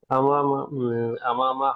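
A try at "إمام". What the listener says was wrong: আমামানা, হামজাটা নিচে দেখেন, হামজা নিচে হইলে ইমাম, আর হামজা উপরে হইলে আমামা। যেহেতু নিচে, যেহেতু বুঝতে হবে ইমামু।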